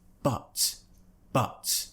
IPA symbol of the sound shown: ʌ